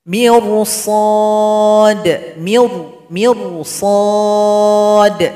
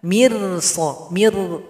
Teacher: Jadi huruf ro dalam sukun harus dibaca tebal.